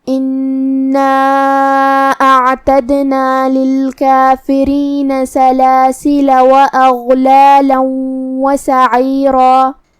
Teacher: اور ہم کلمت سعیرہ پہ رکیں گے تو اس پہ مد الف سے رکیں گے جو کہ مد الف اپنے پیچھے والے حرف کا حکم لیتا ہے تفخیم میں اور ترقیق میں، اور اس سے پہلے حرف را کا حکم ہے تفخیم تو ہمیں را کو اور مد الف کو دونوں کو بھاری آواز میں پڑھنا ہے